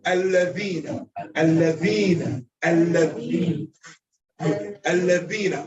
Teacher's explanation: For the dhal, it's holding back the air and the sound is released.